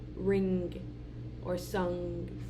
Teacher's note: our fourth sound is going to be nasal. It's going to be velar. It's going to be the sound, as in ring or sung.